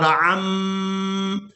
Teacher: عین کو میم مشدد کے ساتھ ملائیں گے اور غنہ کے ساتھ ادا کریں گے